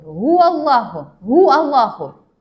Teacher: Лавзатуллах. Лавзатуллах бізде жуан болып келіп тұр. Себебі вау бізде фатхалы болып келіп тұрғандықтан ол жуан.